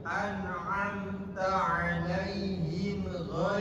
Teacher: idhar syafawi, tidak ditahan, idhar bacanya jelas.